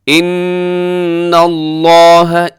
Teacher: عند اللہ ان اللہ، ان یہاں نون مشدد پہ غنہ ہے، لفظ اللہ یہاں پہ موٹا پڑا جائے گا کیونکہ اس سے پہلے زبر ہے نون کے اوپر